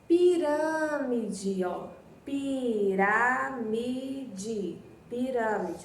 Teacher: a sílaba mais forte que você devia ter pintado era o Rá. Coloca o acento circunflexo aí no A, ok?